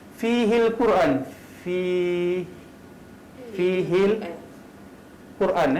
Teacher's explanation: kita tak masuk ke dalam huruf qaf ni terus baca fihil Quran. Maksudnya kita baca tu matikan huruf lam. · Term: Qamariyah